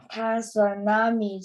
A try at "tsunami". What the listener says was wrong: Yeah, the T is silent in tsunami. It's just pronounced tsunami, like an S. The T you don't hear. You spell it that way, but you don't pronounce the T. The T is silent.